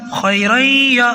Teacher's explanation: آواز کو تھوڑا روک کر پڑھا ہے میں نے، اور تھوڑی سی آواز ناک میں بھی گئی ہے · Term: غنہ